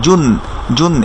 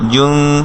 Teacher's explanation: নুন সাকিনের পরে যদি দাল আসে, আমরা এটা লিখে রাখতে পারি, নুন সাকিনের পরে যদি দাল আসে, দাল হারফটা আসে, তাহলে নুন সাকিনের সাউন্ডটাকে ইকফা করে বা গোপন করে পড়তে হয়, অর্থাৎ স্পষ্ট করে পড়বো না